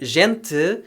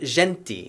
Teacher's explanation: european portuguese did which shifted to the uh sound leading to a pronunciation of a word like gente instead of genti